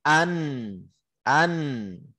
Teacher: nun ini ketika kita menaikkan lidah ke langit-langit, an itu sudah menutup akses suara di situ. Karena lidah naik ke langit-langit tidak ada celah suara. · Karena lidah naik ke langit-langit tidak ada celah suara. Berarti kan syiddah di situ satu sisi, tapi satu sisi ngalir lewat khoisum, lewat hidung gitu. Rukhawah gitu, antara syiddah dan rukhawah.